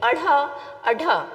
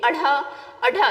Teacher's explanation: झटके के साथ जीभ फेंकाता है ऊपर की तरफ, तो इसीलिए इसको कहा गया है उच्छिप्त व्यंजन।